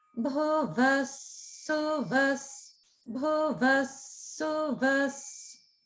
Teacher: So bhu middle, vas down. Then su middle, vas down. · Just notice that the lower swara is happening on vas or vaha.